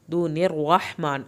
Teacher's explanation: रहमान में रा पुर करके हा को हल्क से पढ़ना है।